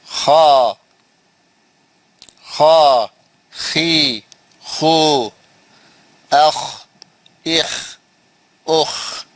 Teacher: This is pronounced from the highest part of the throat, اوپری حلق، highest part of the throat, انہیں مخرج بھی بتا دیا، اس کا نام بھی لکھ دیا، اس کا مخرج بھی بتا دیا، تصویر ڈال کے بتا دیا کہاں سے نکلتا۔